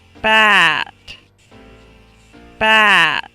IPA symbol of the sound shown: æ